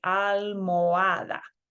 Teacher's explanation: notice that I'm just kind of hopping over the H and going from the O to the A